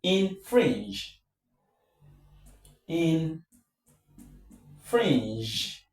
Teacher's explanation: In this case, in the case of infringe, infringe, infringe, the stress is on fringe. So, this is less stressed.